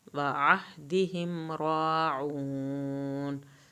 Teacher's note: आइन को हल्क से पढ़ना है